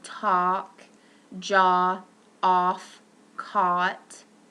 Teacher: This is a back mid-lax rounded vowel. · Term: ah sound